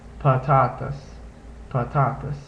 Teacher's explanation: it's sort of a blend between the uh and the a sounds